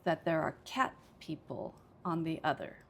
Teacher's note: So this time I would say it's cat that I emphasize the most because I'm comparing.